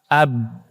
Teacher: karena tertahan dia mantul jadi qalqalah